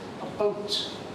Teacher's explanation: Canadians tend to pronounce, in our view, the diphthong, the sequence of vowels or vowel plus a glide consonant, for those of you who know the phonetics, like ow, as o. So they pronounce the word about like this, a boat.